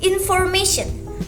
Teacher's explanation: stress falls on the syllable right before the suffix